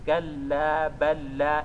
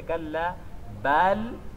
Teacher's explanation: Já fica kalla balla. Fica parecendo que temos apenas um único lam. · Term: idgham